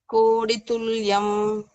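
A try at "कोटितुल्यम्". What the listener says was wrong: It's not da, it is ta. Kotitulyam. Koti. Ta. Koti. Kotitulyam. Koti. Koti. Tulyam.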